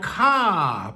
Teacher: ca pronounced in a long vowel with a falling tone at the end of a sentence